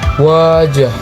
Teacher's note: Suara mengalir lembut tanpa gesekan.